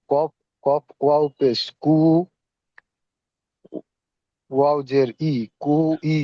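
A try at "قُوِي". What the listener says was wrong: ওয়াউজের ই উচ্চারণ হয় না, ওয়াউজের কি বলেছিলাম, ওয়াউজের ভি, ওয়াউজের বি উচ্চারণ হয়, ওয়াউজের ভি, হ্যাঁ, কো, কোভি, কোভি।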